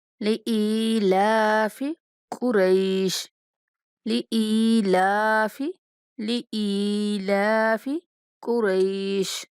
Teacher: حمزہ کے بعد جائے مدہ ہے تو حمزہ کو تھوڑا کھینچ کے پڑھیں گے، اور لام کے اوپر کھڑا زبر ہے تو اس لیے لام کو بھی ایک الف کے برابر کھینچیں گے۔